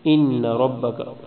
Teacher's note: نون پہ غنہ کریں گے، را کو موٹا پڑھیں گے